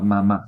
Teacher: se pronuncia simplemente juntando los dos labios